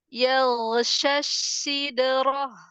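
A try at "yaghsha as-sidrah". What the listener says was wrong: Tahu nggak kenapa diulang? Ya di depan. Ya di depan itu agak tebel. Ya, hati-hati. Jangan sampai duluan tebel.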